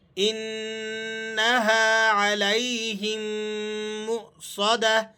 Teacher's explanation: ان نون کو آپ نے غنہ کے ساتھ ادا کرنا ہے، اور علیہم اسے آپ نے معروف پڑھنا ہے.